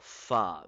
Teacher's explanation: The upper teeth will be placed at the inner side of the wet area of the lower lip.